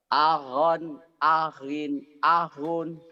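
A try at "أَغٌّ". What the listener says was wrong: Itu mah nggak ada tasdid. Ada tasdidnya Pak, goeknya. Jadi kalau yang ada tasdid itu sama seperti ini. Satu hidup, satu mati.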